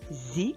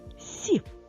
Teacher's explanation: звук зь і з дзвінкі звуки а от звук с і с вони глухі